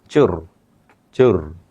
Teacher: মনে করেন তো চানাচুর অনেকগুলো কম্পন দেই এত কম্পন আপনার দেওয়ার দরকার নেই আপনি একটা কম্পন দিবেন চুর চুর জিবাটা একটু কম্পন দিবে ভাইব্রেশন করবে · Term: কম্পনজাত বর্ণ